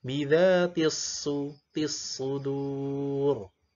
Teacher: Jangan masuk ke sa atau ke sin atau ke shin